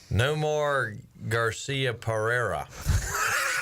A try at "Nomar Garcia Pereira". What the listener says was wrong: He added an extra syllable. it was close. Nomar Garcia Pereira.